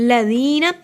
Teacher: کے لیے زبان کی نوک کو دانتوں کے کنارے پہ لگائیے، ذال نرمی والا حروف ہے، سیٹ کی آواز نہیں آئے گی ، ذی کو لمبا کیا کیونکہ یہ حروف مد ہے، نہ